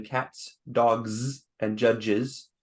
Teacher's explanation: the English plural as in the s z and schwa Z found in cats dogs and judges